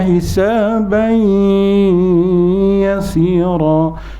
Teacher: Kalau kita baca eloklah kita dengungkan kan, dengan dengung dua harkat. Bagi bagi dia jelas sikit, ataupun kita panjangkan sikit. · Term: Idgham al-ghunnah